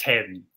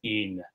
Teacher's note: Heaven is actually, for the most part in Shakespeare, pronounced as one syllable